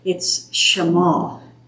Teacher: almost all the names and places put the emphasis on the second syllable